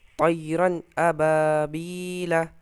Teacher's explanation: यहाँ तय रन में कौन सा कायदा, रन में दो ज़बर इजहार, क्यों? क्योंकि दो ज़बर के बाद इजहार के 6 हरफों में से हमज़ा है, इसलिए यहाँ गुन्ना नहीं होगा